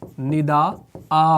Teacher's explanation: ندا ان میں بھی نون کا ساؤنڈ تھا لیکن وقف کی صورت میں 1 الف کے ساتھ بدل دیا 2 زبر کو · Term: وقف بالابدال